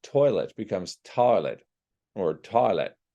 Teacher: we have the oi sound going into an ah